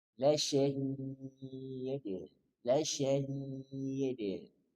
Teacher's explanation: maka berikan sifat kolkolah kubro. Tampakkan pantulannya dan kembali ke makhatur dal.